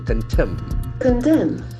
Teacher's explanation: The accent falls on second syllable.